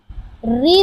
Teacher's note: ऋ ध्वनि का उच्चारण स्थान मूर्धा है